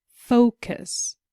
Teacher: we can hear that the stress is on the first syllable